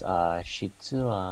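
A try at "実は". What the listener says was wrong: Good guess. It's actually jitsu with a G.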